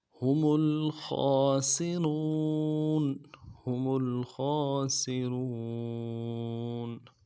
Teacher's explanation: خا کے اوپر کھڑا زبر ہے، خا کو موٹا ادا کریں گے ، کھڑا زبر کو ایک مقدار میں کھینچیں گے، سین کی · سین کی سیٹی باریک ہوگی